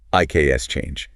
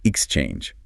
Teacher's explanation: For this word, the stress lands heavily on the second syllable. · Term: syllable stress